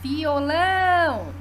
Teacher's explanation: tônica é a última nós dizemos que é uma palavra oxítona violão é a última sílaba tônica